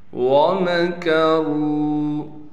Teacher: وَمَكَرُوا، واو کو بغیر کھینچے پڑھیں گے، میم کو باریک کر کے دونوں ہونٹوں کو آپس میں ملا کے میم کو ادا کریں گے۔ اگر تھوڑا سا بھی ہونٹ آپس میں نہ ملے تو میم کامل طور پر ادا نہیں ہوگا۔